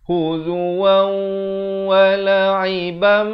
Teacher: Waw tanwin di atas bunyi wan. Tapi bila datang waw, terus masuk beserta dengung 2 harakat. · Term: idgham bi gunnah